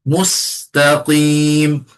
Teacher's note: Ketika sebut sin, gigi rapat, lidah belakang gigi bawah.